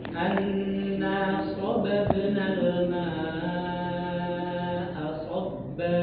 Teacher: huruf mim dan huruf nun itu harus ditempo ketika dia bertasydid